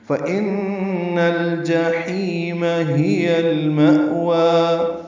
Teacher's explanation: ترجیح دی، فَإِنَّ الْجَحِيمَ هِيَ الْمَأْوَى، فا کو جلدی پڑھنا ہے، ان میں نون مشدد پہ غنہ ہے، نون کو لام سے ملانا ہے · ہا بھی جلدی پڑھیں گے، اقصی حلق سے نکالیں گے